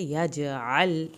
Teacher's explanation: عین کو حلق سے پڑھنا ہے، یجعل، لام کو نہیں ہلانا۔